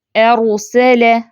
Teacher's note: را ساکن ہے، اس سے پیچھے زبر پڑی جا رہی ہے، تو یہ را ساکن بھی پر پڑی جائے گی